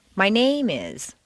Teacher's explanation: if you stress name it sounds as if you're going to continue with more personal information